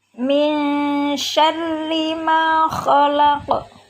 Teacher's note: Min ada nun sukun bertemu dengan huruf shin, maka hukum bacaannya adalah ikhfa atau samar. Syarri, di situ ada ra kasroh, maka dibacanya tarqiq atau tipis.